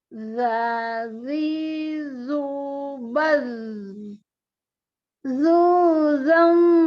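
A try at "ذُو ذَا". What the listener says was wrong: Waktu zuzalza ini nggak boleh ditebelin dengungnya. Tipis. Zuzalza.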